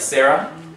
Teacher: h at the end of a word like sarah you know you don't pronounce it it just kind of keeps the ah sound going